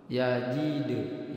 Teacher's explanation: Alam yajidka. Huruf dal sukun ini mempunyai sifat qalqalah, dibaca mantul